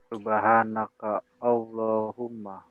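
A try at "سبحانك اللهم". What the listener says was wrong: Jangan diputus. Subhanakallahumma. Jangan diputus, bukan subhanaka Allahumma. Subhanakallahumma.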